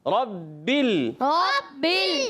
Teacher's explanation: را کو موٹا کرنا ہے، را پر زبر ہے